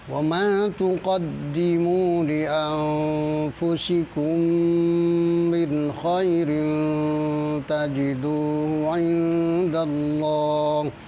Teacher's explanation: Li anfusikum itu ditahan ya, gunnahnya agak ditahan.